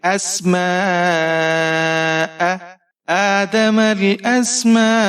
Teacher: آدم, حمزہ کے اوپر زبر ہے, سین ساکن ہے, حمزہ کو سین کے ساتھ ملائیں گے. میم کے اوپر زبر ہے اور یہاں پر مد متصل ہے, تو آپ 5-6 حرکات تک کھینچ کر پڑھیں گے. حمزہ کے اوپر زبر ہے, بغیر کھینچے پڑھیں گے.